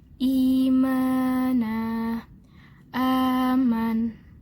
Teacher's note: mad badal. Panjangnya hanya 2 harokat